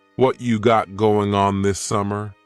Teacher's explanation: What cha is what plus you. You becomes cha.